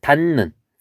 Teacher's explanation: 디귿하고 니은이 만났을 때 요 디귿이 니은이 되고 원래 니은은 니은으로 있는 것